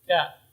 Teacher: Jadi tidak boleh cenderung kepada ya, bukan kai tapi ka.